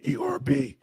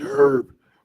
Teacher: British English herb pronounced with the h is standard.